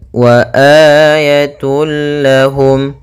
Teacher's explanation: untuk mad badal panjangnya adalah dua harakat